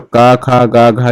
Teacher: का वर्ग का उच्चारण क्या होता है, कंठ होता है। तो का, खा, गा, घा जो भी आएगा वो कंठ से बोला जाएगा।